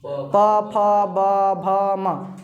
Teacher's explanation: इस प वर्ग का उच्चारण, इसका उच्चारण ओष्ठ से होता है। पढ़ो प, ओठ सट रहा है, ओठ सट रहा है ना।